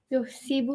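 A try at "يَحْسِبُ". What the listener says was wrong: Nope. No, you can't start with the u. None of the small families start with u.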